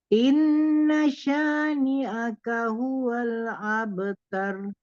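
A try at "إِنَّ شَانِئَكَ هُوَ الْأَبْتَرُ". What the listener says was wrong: Ya.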